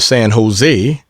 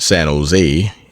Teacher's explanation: generally pronounced San Jose, emphasis on last syllable.